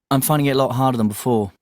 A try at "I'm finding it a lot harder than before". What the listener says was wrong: Yes, and also D, he also didn't pronounce the letter D. Like I'm finding it. I'm finding it a lot harder than before.